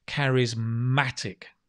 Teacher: The stress on the ma.